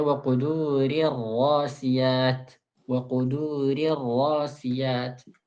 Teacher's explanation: Ra pertama yang tipis, kedua dibaca tebal.